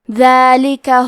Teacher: حرف دال کی ادائیگی زبان کے سر اور اوپر کے دانتوں کے اندرونی کناروں سے ہے